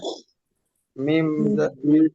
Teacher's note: ঠোঁটের শুকনো অংশ একসাথে করে মিম উচ্চারিত হয়।